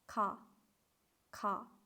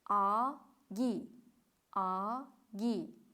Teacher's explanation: Agar so'zning oxirida ko'radigan bo'lsak, bu tovushni unda ham K deyishimiz kerak ekan. So'zni boshida va oxirida K ekan. Lekin ularning orasida kelganda nima ekan? G deb talaffuz qilinar ekan.